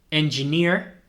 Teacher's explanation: veis que esa doble tampoco se pronuncia como una doble e no es una e más larga ni nada de eso es como una ia